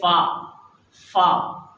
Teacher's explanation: الف میں آخر میں فا ہے، الف اوپر کے دو دانت نیچے کے ہونٹ میں لگیں گے، نیچے کے ہونٹ کے اندر میں لگیں گے، جیسے ہم نے پڑھا تھا الف، ایسے ہی اس کی ادائیگی کریں گے فا۔